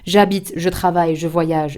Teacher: You do not pronounce the final E of the verb, of course.